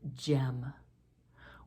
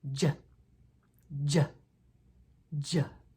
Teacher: J as in the word Jim we form this sound by placing our tongue against the ridge of bone behind our front two teeth and then pushing off with our tongue as we speak out with our voice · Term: soft G